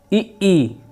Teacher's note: ठीक है, और तालव्य यानी तालु, जीभ और तालु से जो आवाज़ निकलता है, ई, देखिए जो जीभ है वो तालु में जाकर सट रहा है